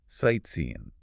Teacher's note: he used the common natural pronunciation, ending it more like an N sound